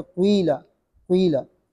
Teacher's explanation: कसरा पढ़ते हैं लेकिन होंठ गोल करते हैं, कसरा पढ़ते हैं होंठ गोल करते हैं ज़म्मे के लिए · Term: ज़म्मा का इशमाम